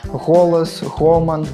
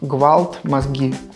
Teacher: фрыкатыўны гук, як у словах голас, гоман, і выбухны ґ, як у словах гвалт, мазгі